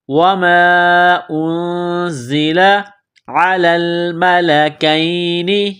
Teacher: چھپائیں گے، اس ناک میں آواز چھپانے کو اخفا کہتے ہیں، زا میں سیٹی کی آواز پیدا کریں گے، دانتوں کو سختی سے ملائیں گے